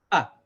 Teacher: And then you make the sound when you open the throat and the air comes out. See, when you say ah, you have to first hold your breath a little bit to say ah. Your throat closes completely, and then you say, when you open it, you make the sound ah. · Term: alif